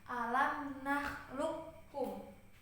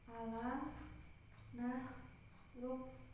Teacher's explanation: Nah, di sini kan ada huruf qaf sukun bertemu huruf ka berharokat. Dileburkan huruf qaf sukunnya ke huruf ka secara sempurna, baik makhraj maupun sifatnya. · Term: idgham